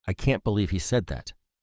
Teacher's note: said that the stressed words are can't believe and said and the intonation pattern is falling expressing a strong statement or sense of disbelief